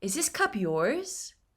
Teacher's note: It's a yes or no question, so the intonation will go up.